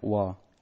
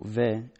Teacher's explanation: Hebrew probably went under European influence, shifted the wa into a va sound, merging with the va that came from ba